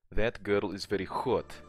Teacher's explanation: you want H to be very hard, kind of like a hissing sound, like when a cat hisses. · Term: letter H